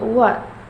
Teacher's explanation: Labiofiller sound wa. This consonant sound is produced when the back part of tongue contact the soft palate and lips also come close to each other.